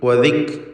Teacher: വദിക്റൻ കാഫിന് സുക്കൂൻ, ശബ്ദം ചലിക്കാതെ ശ്രദ്ധിക്കുക. ഹംസ് നൽകേണ്ട അക്ഷരമാണ്. വദിക് എന്ന് ഉച്ചരിക്കുക.